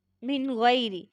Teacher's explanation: نون ساکن یا تنوین کی آواز کو ہم نے ظاہر کر کے پڑھنا ہے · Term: اظہار